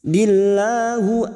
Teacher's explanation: lam jalalah yang sebelumnya kasroh kita baca tarkik tipis